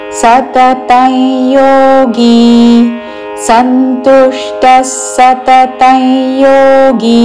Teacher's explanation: ఇక్కడ అనుస్వారము పక్కన యాతో పదము మొదలవుతున్నది కాబట్టి నాసిక య ఉచ్చారణ.